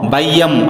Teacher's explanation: மொழிக்கு முதலில் வரும்போது ஒன்றரை மாத்திரை ஐகாரக் குறுக்கம் ஒன்றரை மாத்திரை